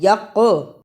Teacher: قاف جزم ہے، یہاں قلقلہ ہوگا، آواز پلٹ کر آئے گی